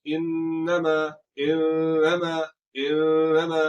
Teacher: तो अब हम इसको कैसे पढ़ेंगे, इन्नमा, इन्नमा, नून में शदर आ गया, आवाज को नाक में ले जाकर एक अलिफ की मिकदार इसको लंबा करेंगे और कसदन लंबा करेंगे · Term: गुन्ना